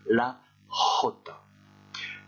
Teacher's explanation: la lettre J, la J, se prononce avec le fond de la gorge, un petit peu comme le G peut le faire parfois.